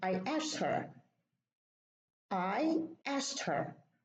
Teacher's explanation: the D is pronounced ta because sa is voiceless · so the K is deleted